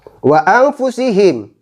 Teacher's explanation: nun sukun yang bertemu dengan huruf fa harus dibaca mendengung, karena dalam ilmu tajwid dikatakan sebagai bacaan ikhfa.